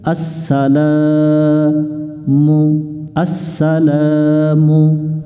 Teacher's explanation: আ মিলবে সিনের সাথে আস সা, আচ্ছা। সিন অক্ষরটা শীষ দিয়ে পড়তে হবে, আমরা পাতা চিহ্ন দেখে এটা শীষ দিয়ে নিব। লা, জবরের বামে খালি আলিফ আছে, এটাতে আমরা এক আলিফ টান দেব এক লেখা দেখে।